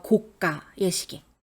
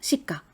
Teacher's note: 대부분 가격과 관련된 부분일 때 까라고 된 소리가 나요.